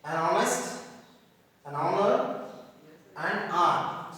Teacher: These are consonants, but here H becomes silent and we pronounce from the O